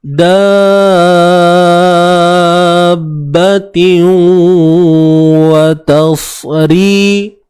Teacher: Tiu ni tanwin bertemu waw, idgham bi gunnah. Masukkan dengan dengung, masukkan bunyi tanwin ni dalam waw.